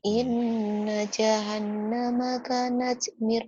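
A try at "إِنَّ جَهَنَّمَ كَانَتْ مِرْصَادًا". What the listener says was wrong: Ka-nya panjang kalau udah gitu. Ada alifnya ka-nya. Kap-nya panjang. Inna jahannama kanat mirsada.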